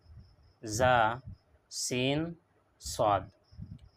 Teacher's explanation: ১৪ নম্বর মখরাজ হইল জিহ্বার আগ আর সামনের নিচর দাঁতর কিনারা। জিহ্বার আগ আর সামনের নিচর দুই দাঁতর কিনারা, এখান থেকে আদায় করা হয় জা, সিন, সদ।